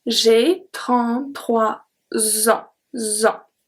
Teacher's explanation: the S from 3 is going to be transferred to en, and it makes a Z sound